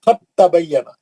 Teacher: यहां पे आप दाल को छोड़ दीजिएगा ता से पढ़ेंगे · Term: इदगाम